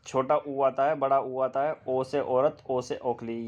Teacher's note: आपकी गोल हो जाती है। जब होठों की स्थिति गोल हो जाती है तो उन्हें बोलते हैं गोलित स्वर